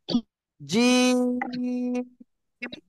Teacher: জিহ্বার মধ্যক তার বরাবর উপরে তালুর সঙ্গে লাগাবো লাগিয়ে আমরা উচ্চারণ করবো